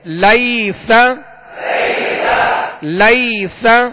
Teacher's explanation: یہاں یا لین ہے، اسے نرمی کے ساتھ بغیر کھینچے بغیر جھٹکا دیے معروف پڑھیں گے